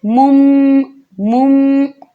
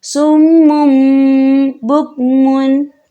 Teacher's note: تھوڑا سا غنہ کریں گے اور غنے کی مقدار 2 سے 3 سیکنڈ ہوگی